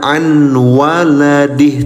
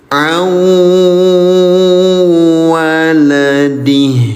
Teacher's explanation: gabungkan bunyi Nun Sukun ke dalam Wau dan senandungkan selama dua ketukan. Jadi, jangan dibaca sebagai 'an waladih', tetapi gabungkan langsung ke dalam huruf Wau. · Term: Idgham Bighunnah